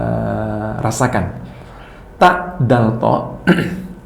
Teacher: Yaitu ujung lidah. Nah, ujung lidah dengan pangkal 2 buah gigi. Pangkal 2 buah gigi yang atas adalah tempat huruf ta, dal, to.